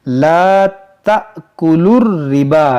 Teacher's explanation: खड़ा ज़बर के बाद यहाँ हमज़ा दूसरे कलमे में है और यहाँ हमज़ा साकिना है, इसको झटका देकर पढ़ेंगे। ला तअकुलुर रिबा, ये लाम को रा से मिलाएंगे।